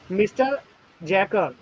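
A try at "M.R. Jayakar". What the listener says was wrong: एमआर जैकर, मिस्टर नहीं, एमआर जैकर.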